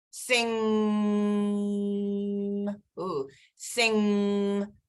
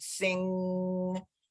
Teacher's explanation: I can feel the back of my tongue pushing up to the back top of my mouth,